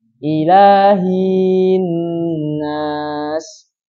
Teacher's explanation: Kemudian yang mungkin terjadi juga menambahkan ya setelah hi. Jadi hi-nya panjang. Ilahin nas, masuk kesalahan jali.